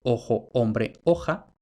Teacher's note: Hay ocasiones en que O breve tónica no diptonga.